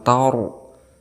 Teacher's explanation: ra yang disukunkan kemudian sebelumnya berharokat fathah, maka kita hukumi sebagai tafkhim, artinya tebal